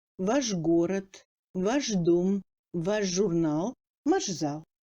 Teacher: Le chat subit une assimilation. Ch passe en j devant les consonnes sonores ayant une paire sourde.